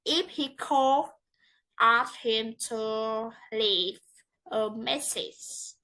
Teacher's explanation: The tones rise in the first clause and fall readily in the second clause.